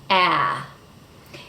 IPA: æ